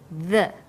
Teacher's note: when you say the your tongue is between your top and bottom teeth